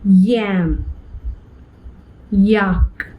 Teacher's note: for a fraction of a second my organs of speech are in the position of the vowel e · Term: semi vowel